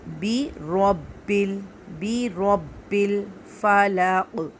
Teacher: اب قوف کو کر دیں گے سائلنٹ، تو یہاں پہ ہو جائے گا قلقلہ، قلقلہ کا مطلب ہے ہلانا، ٹھیک ہے، قوف کو ہلا کر پڑھنا ہے